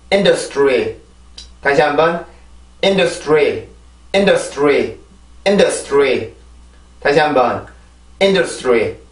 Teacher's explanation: 이 발음을 해줄 때는 입술이 R 발음의 영향으로 tree 이렇게 발음이 됩니다. 아시겠죠? 그럼 단어 다 발음을 해볼게요.